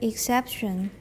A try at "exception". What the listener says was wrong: Exception. Look at my mouth. Exception, not exception. Exception. Don't round. Exception. Everyone, exception. Don't round the sh. There's too much rounding in Taiwan normally, okay?